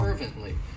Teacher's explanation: It has 3 syllables and the stress is on that first syllable.